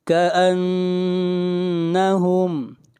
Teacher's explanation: نون کے اوپر شد ہے، غنہ کریں گے